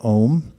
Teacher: It's actually 3 letters, A-U-M, but due to Sandhi rules, the way vowels are merged together, it's pronounced as one syllable